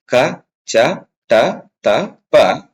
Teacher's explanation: ಕಡಿಮೆ ಉಸಿರಿನಿಂದ ಉಚ್ಚರಿಸತಕಂತ ಅಕ್ಷರಗಳಿಗೆ ನಾವು ಏನಂತ ಕರೀತೀವಿ ಅಲ್ಪಪ್ರಾಣ ಅಂತಹೇಳಿ ಕರೀತೀವಿ